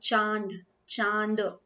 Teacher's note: चांद जब आप बोल रहे हैं तो आपके मुंह के साथ-साथ में आपकी ध्वनि जो है वो नासिका द्वार से भी निकल रही है मतलब वो नाक से भी निकल रही है तो अनुस्वार तो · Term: अनुनासिक